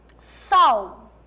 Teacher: lembra o L, quando ele está sozinho, ele tem som de U